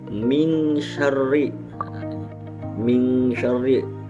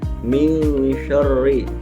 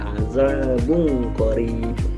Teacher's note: suara nun sukun atau tanwin dibaca samar-samar antara izhar dan idgham dengan dengung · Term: ikhfa